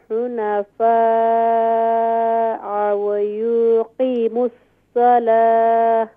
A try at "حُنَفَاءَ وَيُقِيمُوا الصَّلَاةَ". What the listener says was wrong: Don't read wow. Don't make long wow. ويقيم الصلاة.